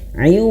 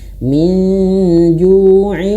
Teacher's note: idgham itu harus masuk hidung ayah bunda ya. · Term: idgham bi gunnah